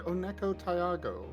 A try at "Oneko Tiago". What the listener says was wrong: there's a little bit too much emphasis in on the pause between Taya and Ugo, but mostly we're fine.